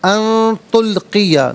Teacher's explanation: نون ساکن کو اخفا کے ساتھ پڑھیں گے